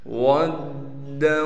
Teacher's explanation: واو کو دال سے ملائیں گے اس لیے کہ دال پر تشدید ہے، تشدید ہونے کی وجہ سے تھوڑا ٹھہراؤ رکھیں گے۔ دال کے اوپر تنوین ہے اور تنوین کے بعد واو حروف ملون میں سے آ گیا، لہٰذا اب دال کو واو سے ملائیں گے غنہ کے ساتھ۔